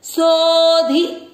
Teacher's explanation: अवग्रह के कारण सो की मात्रा को आपको लंबा खींचना है